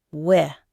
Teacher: The way he said where was almost like weh, with a dropped R sound